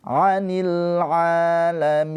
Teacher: Anil a panjang dua harakat nih pemanjangnya fathah berdiri